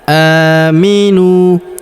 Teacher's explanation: Huruf a kita panjangkan dua harakat karena terdapat alif kecil di atasnya.